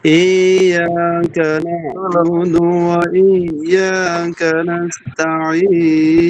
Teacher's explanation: ইয়াকা না'বুদু ওয়া আসলে চেষ্টা করছেন বোঝা যাচ্ছে, কিন্তু না বুধু আওয়াজ বন্ধ করে ফেলছেন। আইনে আওয়াজ বন্ধ হবে না। লিন ওমর মানে তাওয়াসসুত সিফাত, এর মধ্যে আওয়াজটা অল্প কমে যাবে না।